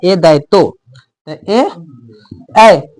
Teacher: ए और ऐ का उच्चारण कंठ से और तालु से दोनों से हो रहा है